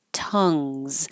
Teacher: have the uh vowel like up so keep your tongue low in the middle and pulled back a little bit like uh tongues and this NG combination is the where the